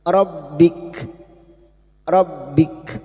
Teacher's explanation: Kita wakaf lagi pada huruf kaf yang memiliki sifat hames dan siddah, yaitu mengalirnya nafas dan tertahannya suara